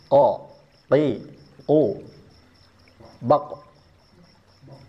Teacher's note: Huruf qof ini makhrajnya terletak pada pangkal lidah